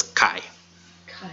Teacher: this is a diphthong, so those two vowels get pronounced together as I